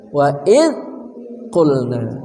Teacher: Wa idh qulna, wa idh zal, jangan sampai terdengar ada tawalut seperti ada suara qalqalahnya. Wa id, ujung lidah bersama ujung gigi seri atas